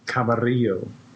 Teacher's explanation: I trilled my R